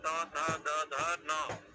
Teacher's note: दांत से लकार और तवर्ग का उच्चारण होता है। लकार का और तवर्ग में त थ द ध न, ये दांत से ही दंत से ही उच्चारण होते हैं।